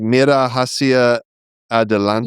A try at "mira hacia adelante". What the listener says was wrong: You don't pronounce the H's. Silent H. I can't think of a time when you pronounce the H. And then J sounds like our H. That's a J. our H.